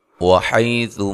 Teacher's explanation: حی لین ہے، سا کو نرم ادا کرنا ہے · میم ساکن کا یہاں اظہار ہے، غنہ نہیں کریں گے